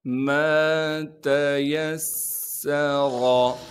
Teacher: میم کے بعد الف مدہ ہونے کی وجہ سے میم کو ایک الف کے مقدار کھینچیں گے۔ تا کو باریک کر کے پڑھیں گے۔ · یا کو سین سے ملائیں گے کیونکہ سین پر تشدید ہے، تشدید ہونے کی وجہ سے تھوڑا سا ٹھہراؤ رکھیں گے اور سین میں سیٹی ادا کریں گے۔